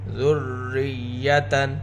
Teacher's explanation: ذال کو نرمی کے ساتھ پڑھیں گے، زبان دونوں دانتوں کے درمیان میں رہے گی۔ را کے نیچے زیر ہے، رائے مشددہ کو باریک پڑھیں گے، ساتھ یا مشددہ ہے، یا کے اوپر بھی شدہ لگائیں گے۔